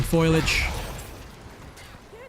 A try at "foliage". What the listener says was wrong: Foliage, not foliage. No, it's F-O-L, not F-O-I-L. Foliage.